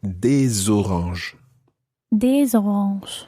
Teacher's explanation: you pronounce the S of des because it's followed by a vowel